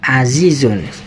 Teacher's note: di lafaz azizun ini di belakangnya seakan-akan ada nun sukun setelah za dhamma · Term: tanwin